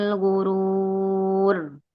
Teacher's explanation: Karena dia waqaf. Harakat terdekatnya adalah dommah maka dibacanya tebal